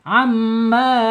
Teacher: Amma tuh ya enggak masuk hidung ya. Mimnya alkhaisum ke hidung